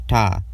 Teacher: the voiceless alveolar stop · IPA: /t/